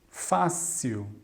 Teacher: l no final tende a ser um som mais parecido com um u